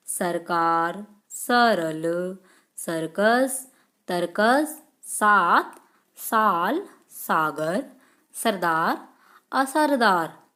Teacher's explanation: स एक सामान्य वर्ड है जिसका उच्चारण स्थान है दंत।